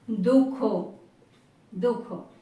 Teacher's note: ऐसे दुख इसका जो है विसर्ग का लोप हो जाएगा